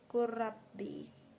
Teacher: Di situ terdapat huruf lam bertemu dengan huruf ra sehingga menjadi kurabbi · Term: idgham mutajanisain